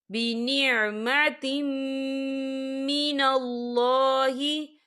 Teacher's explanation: تنوین کے بعد جو ہے میم آ رہا ہے، اور میم جو ہے حروف یرملون میں سے ہے، تو یہاں پر ادغام ہوگا، تو ہم اسے غنّے کے ساتھ پڑھیں گے۔